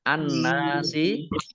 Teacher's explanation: Nun tasdid dibaca gunnah atau mendengung, ditahan 2 harokat.